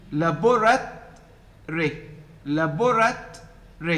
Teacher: the vowel in the last syllable, which is o, is deleted.